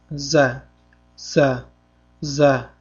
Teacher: mahraji til uchi va oldingi ikki yuqori hamda pastki tishlar orasi. · Za harfi shovqinni jarangli undosh tovish beradi. O'zimizni o'zbek tilimizdagi z harfi kabi talaffuz qilinadi.